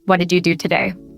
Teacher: For example, in the question, "What did you do today?" the strong words are what, do, and they. The little words, did, you, to, get swallowed or rushed.